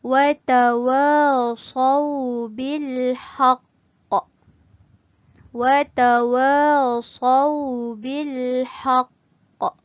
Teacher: sekiranya kita berhenti pada kalimah ini, maka huruf qaf ni mestilah disukunkan, dimatikan.